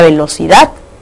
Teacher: La mayor fuerza de voz está en la última sílaba, en este caso, dad. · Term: sílaba tónica